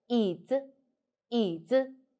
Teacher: We know third tone is like so if we pronounce like, we will do like this, a little bit higher. Pay attention, only third tone, the neutral tone is higher, so it's called 椅 子, 椅 子, not 椅 子, 椅 子, 椅 子.